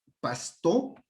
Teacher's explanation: de pronto esa S puede ser alveolar, pasto, o de pronto puede ser velar, pasto, ¿no es cierto?